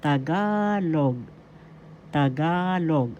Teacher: The accent is in the second syllable.